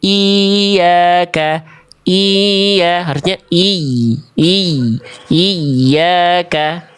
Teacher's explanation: Ya, sehingga dibacanya ya tasdid ini akan terdengar lebih meninggi dibanding sekitarnya. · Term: ya bertasdid